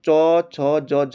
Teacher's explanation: दोस्तों ये हो जाएगा स्पर्श स्पर्शी संघर्षी व्यंजन, स्पर्शी संघर्षी व्यंजन हमारे चौ छ जौ झ